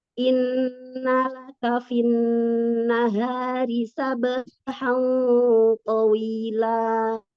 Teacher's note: Hanya 2 harokat aja, jangan kepanjangan. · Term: mad iwad